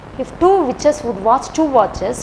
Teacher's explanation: T and sh. T and sh sound. So it is called ch, ch, ch. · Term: ch sound